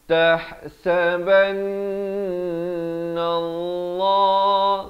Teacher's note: lafz jalalah dibaca tebal